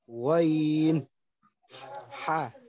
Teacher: 2 নম্বর মাকরাজ কণ্ঠনালী হলকের মাঝখান হইতে উচ্চারিত হয়।